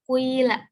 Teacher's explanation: bagian harokat dhammah itu didahulukan tetapi sebentar atau sedikit, sedangkan nanti diteruskan dengan harokat kasroh yang lebih banyak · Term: ismam